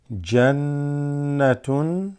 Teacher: nun with a shadda, that's gunna, holding it and slightly nasal vibration.